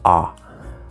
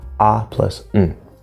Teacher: It's just this sound. There's no W, there's no lips, it's just ah.